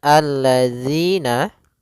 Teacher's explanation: Pada lafal zi, hati-hati jangan sampai terbaca dengan zi, karena di sini huruf zal. Yang mana untuk huruf zal sendiri makhrajnya adalah ujung lidah kita menempel dengan gigi seri atas, sehingga atau bisa kita gigit sedikit zi gitu ya.